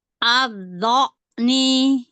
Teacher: Hamzah bukan ain. Hamzah dari tenggorokan bagian bawah.